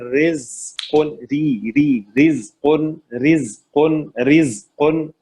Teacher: را کے نیچے زیر ہے, را کو باریک پڑھیں گے, لائٹ پڑھیں گے